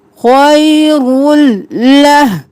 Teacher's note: ادغام بلا غنہ رو کو لام میں مدغم کیا بغیر غنہ کے